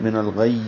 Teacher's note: زبان کا درمیانی حصہ اوپر والے تالو کے درمیانی حصے سے لگے گا اور تشدید کی وجہ سے دبائی جائے گی آواز، من الغی۔ تھوڑی دیر رک کر اس کو وقف کریں گے اور یہاں پہ جیم کا وقف ہے۔